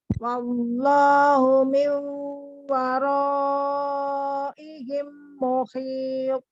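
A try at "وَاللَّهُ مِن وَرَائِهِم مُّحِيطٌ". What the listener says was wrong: Mim ketemu mimnya kurang dengung.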